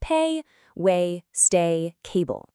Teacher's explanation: Your mouth actually moves as you say it. It glides from one sound to the next.